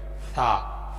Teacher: زبان کو ہلکا سا دونوں دانتوں کے درمیان میں، اگلے دانتوں کے درمیان میں پکڑ کر ادا کرنے والا حروف ہے ثا